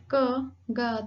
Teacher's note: ऐसा लग रहा है जैसे साउंड जो है वो आपके गले से आ रही है। आपके माउथ का कोई भी ऑर्गन्स यानी कि जो जैसे आपका टीथ है, teeth ridge, tip of the tongue, front of the tongue या रूफ ऑफ द माउथ, इनमें से कोई भी आपका ऑर्गन वर्क नहीं कर रहा है। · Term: वेलर